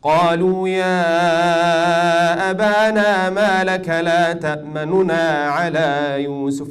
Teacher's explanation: instead of giving the full dhamma, some books say two-thirds or one-third, you pronounce one-third or two-thirds of the dhamma, lakin it's just to say the dhamma of the first noon quick and steal it and run away. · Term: ikhtilas